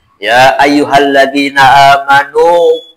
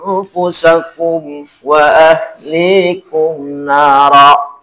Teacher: ketika wakof itu dibaca dengan 2 harakat saja. Ketika wasol, ketika lanjut dibaca dengan 4 sampai 5 harakat. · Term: mad jaiz munfasil